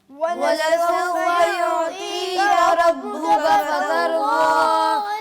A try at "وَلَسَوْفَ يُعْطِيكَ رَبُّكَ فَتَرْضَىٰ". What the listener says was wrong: را کو موٹا کرنا ہے. یعطیک ربک فترضی, دونوں رائے موٹی ہیں. دوبارہ پڑھیے.